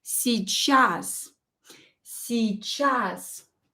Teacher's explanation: e short is barely pronounced si chas you can barely hear it